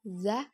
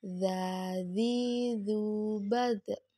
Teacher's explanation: menyentuhkan ujung lidah kita dengan dinding dua gigi di bagian atas suara mengalir dengan lembut tanpa diiringi dengan mengalirnya udara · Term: huruf dza